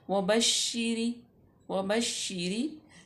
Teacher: रा बारीक पड़ी जाएगी क्योंकि रा मकसूर है